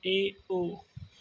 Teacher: अर्ध संवर्त आधा खुला रहेगा